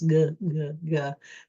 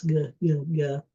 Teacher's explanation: a G is toward the back of your mouth and it's a voiced sound. So you actually turn your on your voice GG.